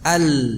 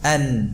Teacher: Kalau tadi lam itu keluarnya dari ujung sisi lidah. Kalau sekarang nun dari ujung lidah.